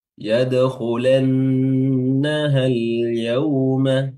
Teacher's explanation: nun tasdidnya ditahan lagi durasinya